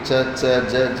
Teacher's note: ఆ నాలికి జ అన్నప్పుడంతా నాలికి ఆ తాలు స్థానాన్ని టచ్ చేస్తూ ఉంటుంది